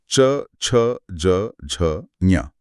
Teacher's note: आपकी जीभ ऊपर तालू से टकरा रही है, यह तालव्य है।